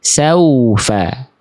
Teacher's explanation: jadi pastikan dia wawunya harus dibaca mencucu atau muncung mulutnya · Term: huruf waw